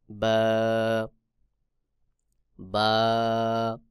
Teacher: তারপরে রয়েছে বা দুই ঠোঁটের ভেজা অংশ হইতে বা উচ্চারণ হয় উভয় ঠোঁটের ভেজা অংশ থেকে বা উচ্চারণ হবে